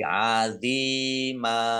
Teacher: Fathah tanwin alif karena wakof dibaca fathah dan panjang 2 harokat. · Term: mat iwad